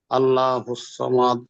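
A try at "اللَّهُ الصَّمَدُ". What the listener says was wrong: আল্লাহ নই, আল্লাহ, মুখ গোল করে বলুন আল্লাহ শব্দ। আল্লাহুস সামাদ। আল্লাহ নয়, আল্লাহুস সামাদ।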